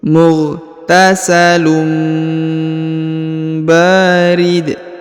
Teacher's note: huruf tanwin ya, berharokat tanwin bertemu dengan ba, maka huruf unnya berubah menjadi mim.